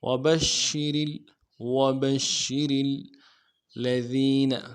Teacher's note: لام کے اوپر تشدید ہے، زور دینا ہے، ذین میں یا مدہ ہے، ایک الف دال میں کھینچیں گے ، اور نون کو نرمی سے پڑھیں گے، وبشر الذین آمنوا،